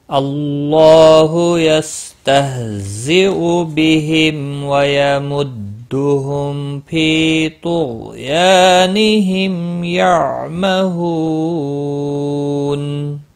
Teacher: یعمہو، ہو واو مدہ ہے، ایک الف کے برابر کھینچ کر پڑھیں گے۔ نون وقف کی صورت میں نون ساکن پڑھا جائے گا، وقف بالاسکان ہوگا۔ 3 سے 5 الف کے برابر کھینچ کر وقف کریں گے